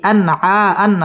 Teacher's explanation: ইজহার গুন্না ছাড়া স্পষ্ট করে পড়তে হবে